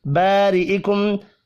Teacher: الف مدہ کو ایک الف کے برابر کھینچ کر پڑھیں گے اور را کو زیر کی وجہ سے باریک پڑھنا ہے